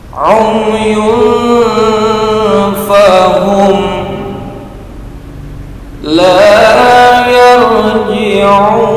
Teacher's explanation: Mim sukun bertemu dengan lam, ada lam, alif, maka selain mim dan ba di depan mim yang disukun disebut idhar safawi. Cara membacanya jelas, tidak mendengung, pendek.